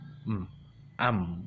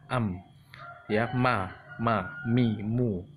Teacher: Huruf mim makhorijul hurufnya dengan kedua bibir ini ya, tertutup. Am gitu, keluar dari kedua bibir apabila ditutupkan.